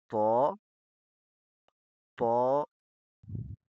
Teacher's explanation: تو میں تا کی نسبت زبان کا زیادہ حصہ ہل پہ لگے گا۔ ہم سختی سے پڑھیں گے تو، بولیے تو، زبان زور سے لگنی چاہیے۔